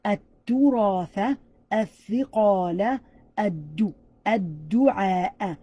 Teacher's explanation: Notice that we're eliminating the L sound and we're connecting the one after it.